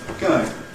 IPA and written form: ˈgəɪŋ (going)